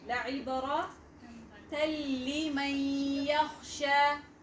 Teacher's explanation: It was idgham without gunna. No nasal sound.